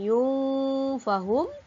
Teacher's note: Tanwin bertemu fa dibaca dengan ikhfa hakiki, iaitu dibaca dengan dengung sebanyak 2 harakat. Yunfahum. La 2 harakat juga, mad asli.